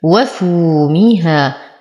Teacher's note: واو ساكنة ما قبلها مضموم فهو من الطبيعي حركتين